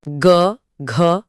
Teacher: जैसे ग, घ हां, आप चाहे तो गले पर हाथ रखकर क और फिर ग बोलकर यह अंतर फील कर सकते हैं। ग बोलते ही गले में गूंज सी उठती है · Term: सघोष